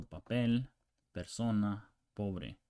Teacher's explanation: P, English P, but not explosive